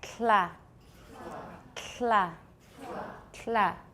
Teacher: keep your tongue tip on your alveolar Ridge to make the L and there will be aspiration as well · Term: lateral release